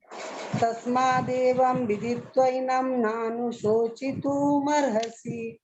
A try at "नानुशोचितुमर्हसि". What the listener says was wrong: तुमर्हसि तू नहीं है, तू है तुम। तस्मादेवं विदित्वैनं नानुशोचितुमर्हसि, तू मर्हसि नहीं है, तू मर्हसि।